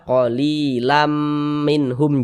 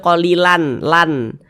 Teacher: Bunyi tanwinnya ini dimasukkan ke huruf mim. Kita baca qalilam minhum, jangan dibaca qalilan lan. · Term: idgham bi gunnah